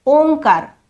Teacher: या अनुस्वराचा उच्चार ओंकार कंठातून झाला